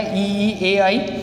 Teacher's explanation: ई में देखिए जो जीभ का अग्र भाग है वो प्रयोग हो रहा है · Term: अग्र स्वर